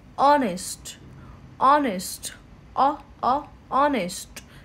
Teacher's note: H is silent here. And it's going to start with vowel sound.